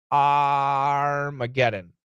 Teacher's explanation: the first a it's a short o plus r